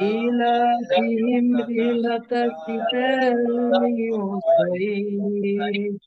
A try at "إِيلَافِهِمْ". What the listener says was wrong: একটু খেয়াল করেন যে এখানে কিন্তু দুটোতে আপনার মাদ আছে, মাদ লা তো মাদ আছে, ইলা ইলা ইলা হবে না, ইলা হবে না, ইলা। যদি মাদ না থাকতো তাহলে কি হইতো?